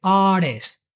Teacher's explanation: Yeah, there's no T in artist.